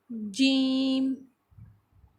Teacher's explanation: جب زبان کا درمیانی حصہ یعنی کہ وسط زبان جب اوپر بالمقابل اوپر تالو کے ساتھ لگتی ہے تو جیم ادا ہوتا ہے۔ زبان کے درمیانی حصے کو اوپر کے تالو کے ساتھ لگائیں، جیم۔